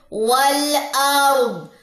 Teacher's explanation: واؤ کی زبر کو لام سے جوائن دے